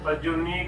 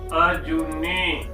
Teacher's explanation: ਉਚਾਰਨ ਵੇਲੇ ਇਸ ਗੱਲ ਦਾ ਹਮੇਸ਼ਾ ਹੀ ਧਿਆਨ ਰੱਖਣਾ ਹੈ ਕਿ ਜੋ ਔਕੜ ਹੈ ਉਸਨੂੰ ਘੱਟ ਅਤੇ ਜੋ ਦੁਲੈਂਕੜ ਹੈ ਉਸਨੂੰ ਲੰਬੀ ਧੁਣੀ ਦੇ ਵਿੱਚ ਉਚਾਰਨ ਕਰਨਾ